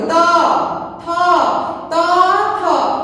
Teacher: দাঁতের সঙ্গে জিহ্বার ডগা লাগিয়ে যে ধ্বনি উচ্চারিত হয় তাকে বলবো আমরা দন্তধ্বনি